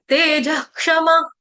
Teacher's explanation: तेज के आगे जो आपका विसर्ग है उसका उच्चारण हलंत ह होगा, तेज क्षमा ऐसे होगा।